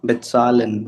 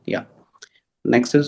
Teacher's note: So there's this like T sound before Z.